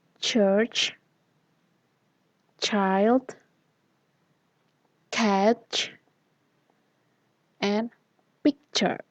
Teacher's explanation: consonants that consist of plosive and followed by fricative